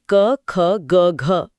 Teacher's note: सबसे पहले हवा गले से यानी कंठ से टकराती है। जहां से क वर्ग जैसे क, ख, ग, घ पैदा होता है।